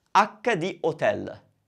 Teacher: usually it's hotel. We still don't pronounce it because Italians don't pronounce H